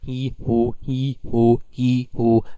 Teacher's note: So the tongue going from front to back, as you say he, who, he, who, he, who. And the lips are also rounded in who but not in he. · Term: front and back vowels